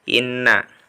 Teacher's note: ada tasjid Inna ya jadi apa namanya ghunnah ya guna atau ditahan dua harokat deh didengungkan dua harokat